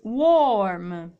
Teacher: quando la r ripeto è in mezzo solitamente gli inglesi britannici non la pronunciano